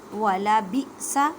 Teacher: حمزہ ساکن ہے، جھٹکا دے کے پڑھیں